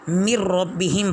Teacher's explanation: یہاں پر نون بالکل ختم ہو جائے گا، لفظوں میں تو موجود رہے گا لیکن پڑھنے میں بالکل ختم ہو جائے گا، تو اس کو مر ربہم پڑھیں گے۔